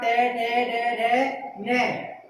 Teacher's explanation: इन वर्णों का उच्चारण स्थान क्या है? मूर्धा है। इसीलिए इन वर्णों को मूर्धन्य वर्ण कहा जाता है